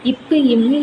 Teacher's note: 2 இதழ்கள் ஒரே குவியலறதுனால பிறக்கிறது